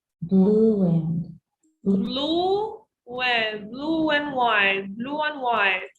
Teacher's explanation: There are three vowel sounds that link with the help of a W.